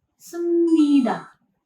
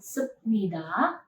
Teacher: Konsonan pieep berada di bacim positions dan konsonan mien berada di initial positions. Karena konsonan pieep bertemu dengan nasal consonant, maka konsonan pieepnya itu harus berubah menjadi nasal consonants juga. Pieep berubah menjadi miem.